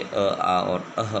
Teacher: उच्चारण स्थान देखिए, नासिका, अंग, मूर्धा, री, कान तालु से, ई और ई, ओष्ठ उ और ऊ होते हैं, दंत है वो, और कंठ ये उच्चारण स्थान कंठ से अ, आ और अह बोला जाता है